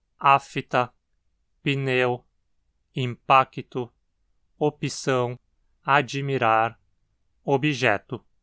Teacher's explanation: começar falando sobre a epentes e vocálica no português brasileiro então é muito comum ocorrer a quebra de encontros consonantais pela inserção de uma vogal e entre elas